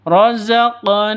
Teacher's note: Razaqnahum, seperti itu. Na panjang 2 ketukan karena ada alif diawali dengan fathah, mad asli.